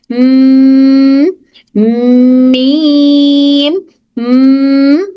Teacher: खाली बोलते ही vibration start हो गई हमारी नाक में। फिर उसके बाद हम उसके पूरा मीम को खोल के पढ़ रहे हैं।